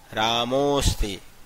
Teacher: बाद में यदि अ आएगा तो उस अ को अवग्रह चिन्ह में बदल देते हैं, और इसका उच्चारण हो जाएगा रामोस्ति। अ का साउंड, जो उच्चारण है वो लुप्त हो जाता है, साउंड उसका नहीं आता है।